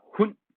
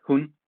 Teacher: it's sort of a glottalization of a vowel. So it's the difference between hun, which is with stød, and hun, which is without stød.